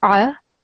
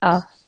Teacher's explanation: the sound of a hamza is exactly the same as that of a Aleph okay so that means it shouldn't be from the throat it should be like you would pronounce a normal Aleph so